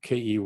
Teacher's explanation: that k is further forward in the mouth because it's anticipating position of the following e